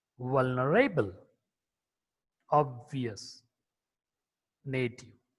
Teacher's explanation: V is a voiced labiodental fricative consonant.